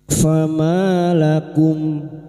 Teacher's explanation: Fama ma fathah diikuti alif dua harakat. Kita panjenengan mad thabi'i.